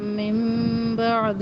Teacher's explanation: نون ساکن کے بعد با، یہاں پہ اقلاب کا قاعدہ ہے، آواز میم میں بدل رہی ہے